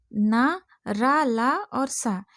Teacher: अपभ्रंश तक दंत ध्वनि थे, आदिकाल में वत्सर्य हो गए